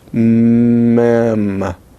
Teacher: It is bilabial, nasal, and voiced.